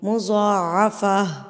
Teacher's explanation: یہ گول تا جو ہے ہا ساکن میں تبدیل ہو جائے گی، یہ گول تا گول ہا بن جائے گی، اور آپ نے اس کو ہا کی ساؤنڈ دینی ہے.